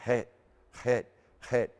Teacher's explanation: So I try to just start off with the het, just going het, making it breathy. Het. Hear that right out of my back of my throat.